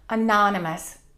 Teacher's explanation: We stress the second syllable, monotonous, and that O-U-S at the end gets reduced.